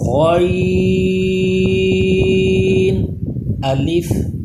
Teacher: غین حروف مستعلیہ ہے، پھر اس کو پر پڑھیں گے